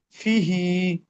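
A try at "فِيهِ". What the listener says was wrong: ফি, ফি টান দাও, হি, ফিহি।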